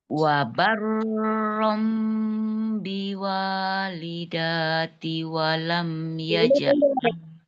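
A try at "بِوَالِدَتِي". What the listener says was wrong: Danya pendek. Jangan dijedah, dia kan ada gunnahnya, sambung.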